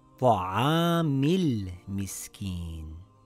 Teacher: Now, when we read it together, we drop the Hamzatul Wasl.